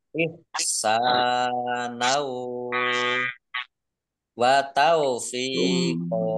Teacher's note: Ihsanau sin fathah alif mat tobi'i panjang 2 harokat. Fathah tanwin bertemu dengan huruf wawu, bacaan idgham fi gunnah, masuk dengan mendengung, yaitu mendengung wawu. · Fathah tanwin alif karena wakof maka dibaca fathah dan panjang 2 harokat. Namanya mat iwad.